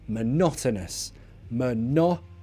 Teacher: lots of schwa in that word